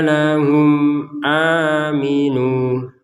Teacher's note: Wa idza qila lahum, mim sukun bertemu dengan alif atau dengan hamzah, ini kita baca dengan jelas